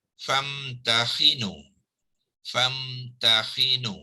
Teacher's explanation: Hamzah wasal ni digugurkan dalam sebutan.